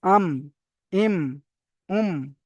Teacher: মিমের মাখরাজ হলো দুই ঠোটের শুকন অংশ মিলিত হয়ে মিম উচ্চারিত হয়